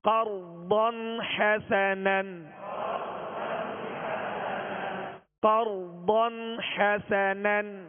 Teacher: قرضا تو ضاد کو پر کرتے ہوئے ہونٹوں کو گول نہیں کیجیے گا